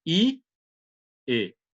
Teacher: Você sente que a língua desce, mas desce também em direção aonde? Ao centro